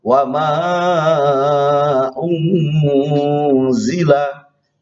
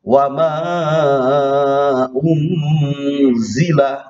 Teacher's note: Wa ma unzila, nun tetap, tetapi langsung saja lidah ini nyambung ke harokat za, harokat berikutnya. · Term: ikhfa